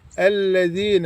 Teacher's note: طرف اللسان ها يلمس الثنايا العليا الاربع اسنان الكبرى دي طرف اللسان يلمسهم من الداخل كده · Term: الذال